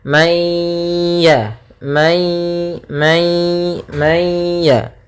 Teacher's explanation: nunnya dimasukkan kepada huruf ya ya Sehingga langsung kepada huruf ya dan ditahan suara ghunahnya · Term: Idgham naqis